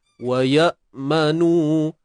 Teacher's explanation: hamzah ni kita matikan betul-betul pada makhraj hamzah tu sendirilah, iaitu pada pangkal kerongkong kita. Wa ya, bunyi dekat bawah.